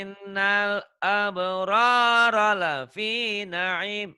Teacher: Ra yang pertama panjang, ra yang kedua pendek.